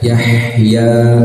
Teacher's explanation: Ha ini yang makhrajnya di tengah tenggorokan